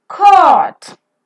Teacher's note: During the articulation of this vowel, the back part of the tongue is raised to the position between half closed and half open. The lips are rounded. And it's a longer vowel pronounced for a longer time.